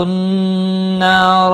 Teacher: نون مشدد پر گناہ ہوگا، الف مدہ بھی ہے، ایک الف کے برابر کھینچ کر پڑھیں گے، اور را زبر کی وجہ سے پر پڑھا جائے گا